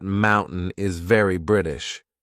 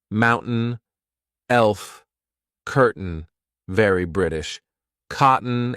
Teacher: If you're studying a British accent, correct me if I'm wrong, but I feel that mountain is very British. This is when I'm replacing T with the glottal stop.